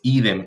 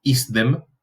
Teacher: La sibilante, el sonido de la S, en contacto con la dental, tiende a caer. Puede o no caer, tiende.